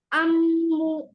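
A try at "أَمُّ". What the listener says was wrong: হ্যাঁ, আরেকটু বেশি করে ধরে রাখতে হবে।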